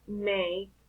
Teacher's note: The manner of articulation is nasal, the place is bilabial, and the voicing is voice. In this case, there are vibrations, so you feel the vibration here in the vocal cords because your lips are together and the air don't go through your mouth. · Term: voice bilabial nasal